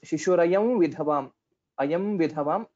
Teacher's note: So vakara, it will be a nasal vakara we will have to tell.